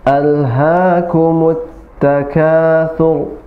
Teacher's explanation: Karena ra-nya diwaqaf dan maka disukunkan, ra disukunkan, dan sebelumnya harokatnya dhammah, maka hurufnya tafkhim atau mufakham, ya, tebal · ha tidak besar, tapi hanya hak kecil, bukan huruf besar, bukan huruf tebal, tapi huruf tipis.